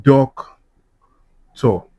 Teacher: If I break down doctor, we have doc tor. Because doctor is a noun and is disyllabic, the stress will be on the first syllable.